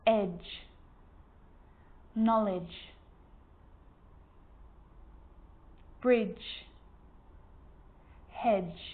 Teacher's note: the D and the G combined together produce the J consonant sound